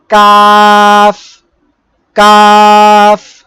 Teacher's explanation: জিহ্বার গোড়া থেকে একটু আগে বাড়িয়ে তার বরাবর উপরে তালুর সঙ্গে লাগিয়ে কাফ